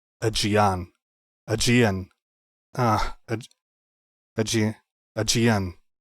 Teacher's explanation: With the G sounding like a soft Y, Aegean. Or J, Aegean. Aegean. Aegean. And the stress on the final syllable.